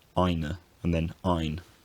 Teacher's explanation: the word final vowel weakens and disappears